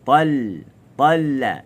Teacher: Dia datang ta, pangkal lidah naik. Lam, pangkal lidah jatuh. Ta ada lekuk, lam tak ada lekuk. Talla. Sebab tu dia gini, ustaz nampak tu dia berjengkit.